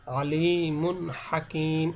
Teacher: স্পষ্ট বলতে এখানে গুণনা হবে না, গুণনা ছাড়া স্পষ্ট করে পড়তে হবে। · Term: ইজহার